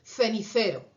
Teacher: Las interdentales no existen en su dialecto del español, pero existen en mi dialecto del español de España